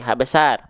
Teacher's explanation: Ha besar itu dilafalkan dari tenggorokan paling bawah atau sering kita sebut dengan pangkal tenggorokan bukan dari bukan dari dada